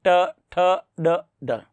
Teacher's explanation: क्योंकि देखिए आप ट, जीभ थोड़ी सी उल्टी हुई और सीधे आपके दांतों के पीछे टकराए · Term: मूर्धन्य